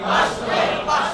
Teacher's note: 13টি হরফ ব্যতীত বাকি 16টি হরফ রখাওয়াত সিদ্ধা অর্থ আওয়াজ বন্ধ সিদ্ধার হরফগুলি তার মাখরাজ থেকে মজবুত ভাবে অবস্থানের কারণে উচ্চারণের সময় বাতাস বন্ধ থাকবে